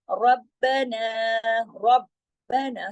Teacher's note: ربنا سختی سے جوڑنا ہے، را کو موٹا بھی کرنا ہے، لیکن آگے با اور نا کو موٹا نہیں کرنا. 2 با ہے، رب، دونوں با کو پڑھنا ہے.